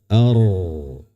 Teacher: Cuma pangkal lidah naik ya agak ditekuk sedikit ujungnya ke langit-langit. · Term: huruf ro sukun